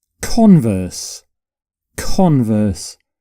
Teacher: you put the stress on the first syllable